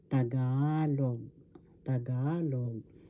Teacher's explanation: pronounce tagalog first board sa second syllable ga third syllable log the accent or the stress is in the second syllable